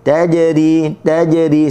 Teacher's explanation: Okey, jannatun tajri. Tajri huruf jim berada di tengah kalimah, sukun kena bunyi qalqalah